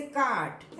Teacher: कोई कॉन्सोनेंट है उसके पहले आर है तो उस आर का प्रोनाउंसिएशन नहीं करते इन आरपी